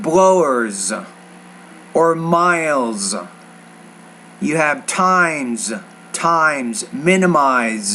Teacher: The Z, you have to pronounce with a little more vibration. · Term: Z consonant sound